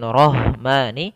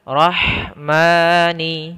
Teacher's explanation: Roh bukan dibaca dengan rohmani, tapi dia ha kita keluarkan dari tengah tenggorokan kita, maka rahmani, ya, rahmani.